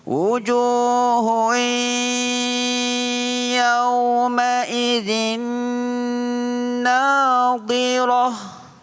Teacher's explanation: Itu makna idgham. Ma'al gunnah, bersama-sama dengan dengung. Jadi dengung dua harakat. Panjangkan sedikit dengung tuan-tuan. · وجوه يومئذ ناظرة kurang dengung pada hui itu baris dua bertemu dengan huruf ya, hukumnya idgham. Idgham ma'al gunnah, memasukkan bunyi tanwin iaitu baris dua kepada huruf selepasnya iaitu huruf ya.